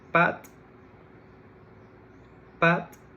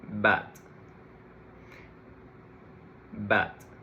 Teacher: when I pronounce bat, my vocal cords have to vibrate to produce that sound correctly. Instead, with pat, pat, there is no vibration.